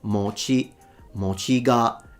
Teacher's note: But it's the opposite, at least in standard Japanese, it's pronounced mochi, mochi ga. It's a heiban pattern, so one of those low to high pitches in Japanese